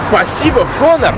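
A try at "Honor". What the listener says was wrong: Я не Хонор, я Хонор. Буква Х не произносится.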